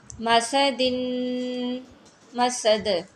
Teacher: سین کو ادا کرتے ہوئے سیٹی کی آواز پراپر آنی چاہیے · ماسا دن، اور یہاں پہ دال جو ہے حروف قلقلہ میں سے ہے۔ جب ہم نے وقف کرنا ہے تو پھر دال ساکن ہو جائے گی تو یہاں پہ قلقلہ ہوگا۔